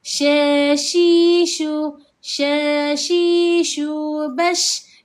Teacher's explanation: Ja, ji, juaj, syai, syu bas. Syin ini dia satu sifat yang spesial bagi dia iaitu sifat at-tafasiyi iaitu berhamburan anginlah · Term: sifat at-tafashi